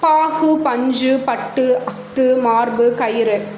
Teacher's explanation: வல்லின மெய்களை ஊர்ந்து வந்த உகர ஒலிகள் இச்சொற்களின் இறுதியில் வருவதனால் தனக்கு இயல்பாய் அமைந்த ஒரு மாத்திரை அளவில் குறைந்து அரை மாத்திரையாக ஒலிக்கும் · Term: குற்றியல் உகரம்